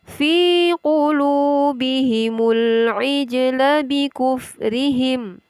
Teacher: terdapat hukum bacaan qalqalah atau bacaan memantul pada huruf jim sukun.